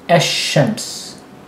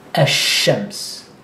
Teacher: You stress it, and you don't pronounce the L. So you go straight from ash-shams, as opposed to the rest of the letters that are not part of these 14, you actually pronounce the A and the L, and you do nothing to the letter that comes after a alif lam. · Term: sun letters